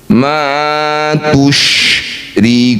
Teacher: Shin punya sifat namanya tafasyi, jadi harus udara ini menyebar ke seluruh rongga mulut. Ma tusyrikuna, jangan tertukar dengan huruf ta.